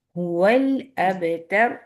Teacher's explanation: होठ राउंड होंगे तो हु की आवाज आएगी बहुत अच्छी सी